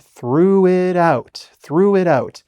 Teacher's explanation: So, we have this, like, liaison. In French, we say, like, a liaison, where it sounds like one word